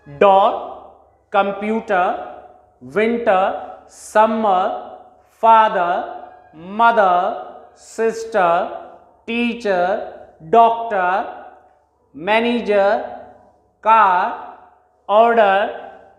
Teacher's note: जब भी हम उनको अकेले में पढ़ते हैं, प्रोनाउंस करते हैं, लास्ट आर को कभी भी प्रोनाउंस नहीं किया जाता